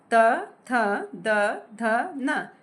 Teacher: जो आपकी जीभ है वह दांत से लग के फिर आवाज आ रही है · त वर्ग इनका उच्चारण दंत से होता है